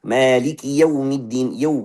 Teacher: Buru-buru mau masuk waw, maka fathahnya tidak jelas. Fathahnya campur sama dhamma.